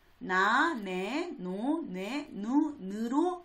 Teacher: 단어의 첫머리에 오면 리을이 니은으로 바뀌어 소리가 난다.